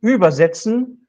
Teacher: if I stress the first syllable, übersetzen, then it means something like carry over. So stress shift determines the meaning.